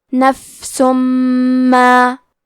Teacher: ادغام کا معنی ہے حرف کو حرف میں داخل کرنا تو ہم تنوین کو میم میں ملا کے غنہ اور تشدید کے ساتھ یہ حکم کو ادا کریں گے